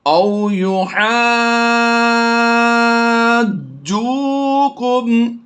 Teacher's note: جیسے حج ہوتا ہے نا، تو اسی حج کی ہا کو ہم نے لمبا کرنا ہے